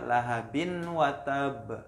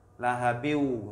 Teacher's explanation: tidak dibaca lahabin watab, tapi lahabiu itu langsung masuk huruf waw. Lahabiu, kemudian dengan dengung. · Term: idgham bi gunnah